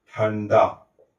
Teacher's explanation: ण है। इसलिए इस अनुस्वार का उच्चारण किसके जैसे होगा? ण की तरह होगा